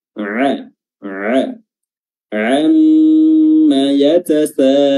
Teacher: Dan huruf ainnya harus betul-betul kedengaran jelas, ya. Huruf ain yang berada di wasatul halqa, pertengahan tenggorokan